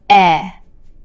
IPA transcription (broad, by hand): ɛ